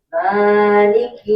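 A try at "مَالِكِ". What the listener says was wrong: Itu kepanjangan mah. Kurangi lagi. Sama dengan Ar-Rahman di belakang. Coba ulangi Ar-Rahman. Ma harus sama itu coba.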